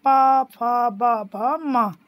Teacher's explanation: हमारे दोनों जो लिप्स हैं वो एक दूसरे पे छूते हैं, देखो बोल के देखिए, प फ ब भ म, बिना छुए आप बोल ही नहीं पाएंगे इसको, ठीक है। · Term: ओष्ठ